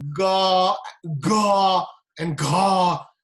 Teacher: there is a vibration in the vocal cord. So that's why it's called voiced